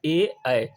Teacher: कंठ और तालू यानी जिन ध्वनियों का उच्चारण कंठ और तालू से होता है